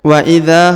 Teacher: huruf dza dipanjangkan 2 harokat karena di depannya terdapat alif